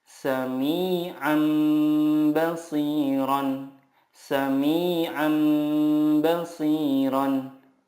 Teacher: Cara membacanya, mengganti nun sukun dengan mim sukun dan disertai gunnah 2-3 harokat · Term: iqlab